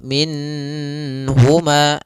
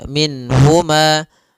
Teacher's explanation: Nun di sini harus jelas karena bertemu dengan huruf ha, maka tidak boleh ditahan.